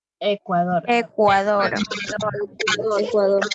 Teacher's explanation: Quiere decir que esta de aquí, esta palabra es una palabra aguda, porque tiene su acento Dor en la última sílaba